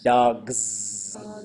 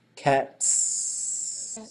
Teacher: Vocal cords are on at the end, they stay on. They're off, they stay off.